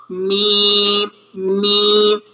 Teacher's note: اسی طرح میم point number 3 دونوں ہونٹوں کے خشک حصے سے، اس تصویر میں آپ دیکھ رہے ہوں گے میم ادا کرتے ہوئے جو ہے وہ دونوں ہونٹوں کے خشک حصے کو ملایا گیا